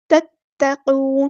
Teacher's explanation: ता जो है वो मुशद्दद है, तो शद वाले हरूफ को अच्छे से अदा करना है, एक बार साकिन करके एक बार उसकी हरकत के मुताबिक। तत्तक़ून, क़ाफ़ हमारा हेवी लेटर है, पूरा अदा करेंगे, नून को हम साकिन कर देंगे वक़्फ़ करते हुए और मद आलिफ़ भी होगी यहाँ पर।